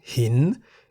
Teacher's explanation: Hin begins with a high-class consonant ho heb. Therefore, based on the tone rules for live syllables, hin is in the rising tone